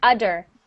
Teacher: sometimes people don't say the th and it sounds like udder